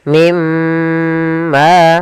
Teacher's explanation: masukkan nunnya ke huruf mim dan kemudian ditahan dengan gunnah. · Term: idgham bi gunnah